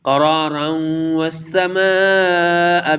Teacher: تنوین کے بعد حرف یرملون میں سے واو ہے، ادغام یرملون ہوگا